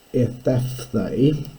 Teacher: But the other thing, which was Grassmann's law, is we now have ethaphthe. So we've got two aspirates separated by a vowel